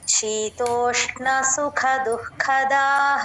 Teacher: అన్నప్పుడు ర కింద మెలిక పలకాలి అందరూ చూసుకోండి శీతోష్ణ సుఖ దుఃఖదాః ఇక్కడ సుఖ మహాప్రాణ క కి దుఃఖ దు తర్వాత విసర్గ గా ఉంది మళ్ళీ ఒత్తు క పలకాలి